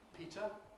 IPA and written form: ˈpiːtə (Peter)